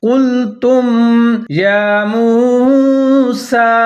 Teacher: قُلْتُمْ يَا مُوسَى، یا کے اوپر کھڑا زبر ہے، میم پیشوا مو، سین کے اوپر بھی کھڑا زبر ہے، سین کو ظاہر کر کے پڑھنا ہے، سٹی بجانی ہے